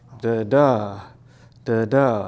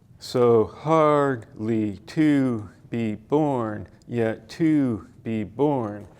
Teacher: an iamb is da da, da da, an unstressed syllable followed by a stressed syllable.